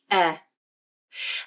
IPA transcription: ɛ